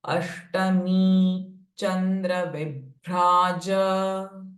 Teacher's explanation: Ashtami, retroflex sh. And me is a dirgha swara.